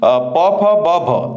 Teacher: ओष्ठ्य स्पर्श व्यंजन ध्वनि